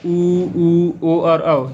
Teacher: वृत्त मुखी जिसमें ध्वनि जो है मुख कंप्लीटली वृत्त या आकृति बना लेता है जिससे ध्वनि उत्पन्न होता है।